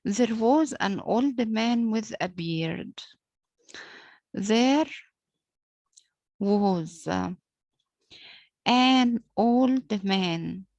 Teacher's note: Old man, of course, a man is the noun, is stronger than the adjective old. So man will be stressed or accented, while old will be unaccented